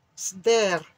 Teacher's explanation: avec le R roulé